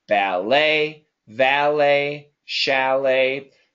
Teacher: it's not let it's le